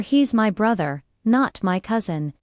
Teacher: The stress on brother changes the meaning. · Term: contrastive stress